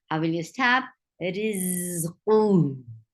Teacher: How will you stop? You will give sukoon at the end and it will get sifa of rakhawa. The sound shouldn't stop when you are given sukoon on ha. Rizquhu. I will say in continuation, rizquhu.